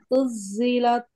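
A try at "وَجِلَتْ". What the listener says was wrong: এটা জিম। উজ্জিলাত, বর্গীর জ। আবার জ হয়ে যাচ্ছে। আপা, উজ্জিলাত না, উজ্জিলাত, বর্গীর জ। আপনি বলেন জামা, বলেন জামা, বলেন জামা। এই জামাটাই উচ্চারণ হবে উজ্জিলাত। কিন্তু আপনি জামা তো ঠিক বললেন, জামা তো ঠিক বললেন, তাই না?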